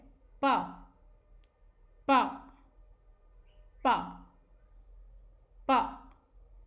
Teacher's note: यानी इसमें लिप्स पास भी आते हैं और वो मुंह के अंदर की तरफ भी जाते हैं। यानी हम लिप्स को बिल्कुल कसकर या प्रेशर के साथ बंद करते हैं और उसके बाद साउंड आता है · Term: वॉइसलेस साउंड